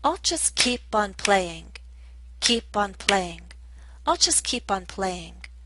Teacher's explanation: the overall rhythm is telling us to stress the verb, keep, and this ing form of the verb, playing